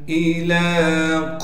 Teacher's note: حمزہ کو صاف کر کے بغیر جھٹکے کے پڑھیں گے۔ لام پر کڑا زبر ہونے کی وجہ سے لام کو 1 الف کے مقدار کھینچیں گے۔